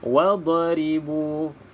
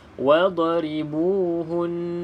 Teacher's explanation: huruf dad bukan huruf Qalqalah maka tidak boleh dilantunkan